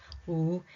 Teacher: The sound involves two constrictions of the vocal tract made at the same time. One of them is lip rounding.